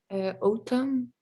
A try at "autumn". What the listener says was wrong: Autumn. Very good. It's ah. Say it again.